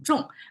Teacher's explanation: the action word is a falling tone